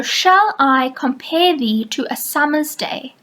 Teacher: there are five unstressed and five stressed syllables in each line · Notice the pattern that is formed: unstressed, stressed, unstressed, stressed, for 10 beats every line. There are 5 unstressed and 5 stressed syllables in each line. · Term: iambic pentameter